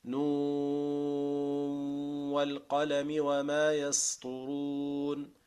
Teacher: So you move from the Noon, then the Noon of the Noon becomes mudghama. You mix it with the Waw, but the Waw will have a nasal part.